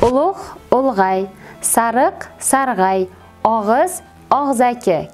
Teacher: Tovush tushishining keyingi holati, yettinchi holati, ya'ni ulug', sariq, og'iz kabi so'zlarimizga aki, ay kabi qo'shimchalarni qo'shganimizda ham ushbu so'zlar tarkibidagi ikkinchi bo'g'indagi unlilar tushib qolishi kuzatiladi